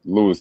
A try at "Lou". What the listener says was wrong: The IS is silent. Lou.